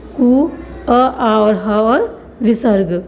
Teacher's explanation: कंठ से उच्चारित किए जाते हैं